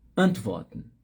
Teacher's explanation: Sílaba tônica está no A.